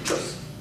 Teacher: But that word choose, it has a little bit of a buzz. The vowel gets stretched.